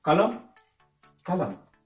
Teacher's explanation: La prononciation s'arrête sur M. · La lettre N dans ces mots-là ne se prononce pas.